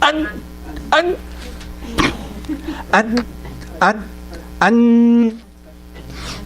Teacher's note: there should be ringing of the nose, which is called the ghunnah. Ringing of, so I hear it actually vibrating, in my head.